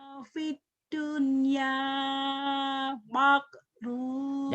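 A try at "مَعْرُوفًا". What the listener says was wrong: Jangan mak, orang Jawa tuh ketahuan. Wasahibhuma fid dunya jangan makrupa. Siapa sih itu wakil presiden Pak Amin Ma'ruf? bukan makrub atau amin ma'ruf. Ya bukan makrub.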